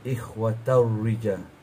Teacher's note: Ikhwatau rija tak payah dengar. Idgham bila gunnah. Ikhwatau rija. Dia tak boleh dengar langsung.